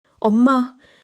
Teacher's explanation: 엄마 keeps 미음 soft and nasal.